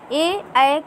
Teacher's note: कंठ तालब, यानी कंठ और तालु से मिलकर के ये ध्वनियाँ निकलती हैं।